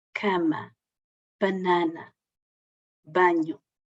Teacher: sempre que um A em posição tónica, estiver antes de uma consoante nasal, M, N ou N, a articulação é cama, banana, banho, semi-fechada